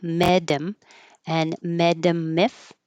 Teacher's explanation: The T changes to a D and the H disappears. And so we have a connection of the D and the M